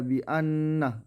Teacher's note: Di ayat kelima ada bi'annah yaitu huruf gunnah. Gunnah itu gunnah musyaddah karena ada huruf nun yang bertasydid, yaitu cara membacanya memasukkan dengan mendengungkan.